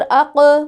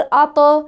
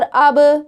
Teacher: ये 5 हरूफ़ कलकला हैं। जब ये साकिन आए तो इनकी आवाज़ पलट कर वापस आती है